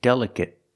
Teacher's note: the last syllable is a short sound it it it